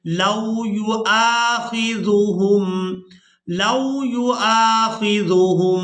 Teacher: हमजा को अलिफ मद्दा की वजह से खींच कर अदा करेंगे।